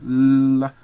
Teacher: you allow air to pass by on both sides of your tongue so you get L and take out the vocal cords and